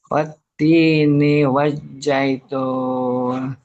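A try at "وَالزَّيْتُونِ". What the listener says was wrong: Ya, coba jangan pakai J, pakai Z. Zebra, zebra. Watini wazai.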